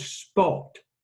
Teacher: the P in spot is unaspirated while the P in pot is aspirated.